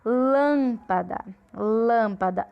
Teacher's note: Lâmpada, o lã é a sílaba tônica. Como ela é antepenúltima, ela é proparoxítona.